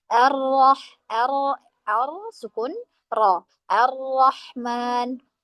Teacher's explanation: Ar-Rahman. Kita sempurnakan sukunnya, kita sempurnakan idghamnya di situ, baru kemudian kita membaca harokat fathah ro tersebut.